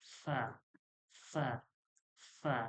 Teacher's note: পেট অর্থাৎ ভিজা অংশকে বা যেটা নরম অংশ ওইটাকে পেট বলে নিচের ঠোঁটের পেট সামনের উপরের দুই দাঁতের আগার সঙ্গে লাগিয়ে উচ্চারণ হয় ফা